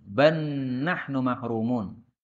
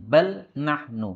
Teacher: Maka lamnya lebur menuju nun. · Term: idgham